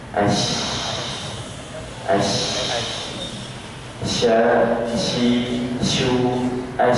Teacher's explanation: bukti bahwa syin itu tidak menempel dia hanya mendekati langit-langit atas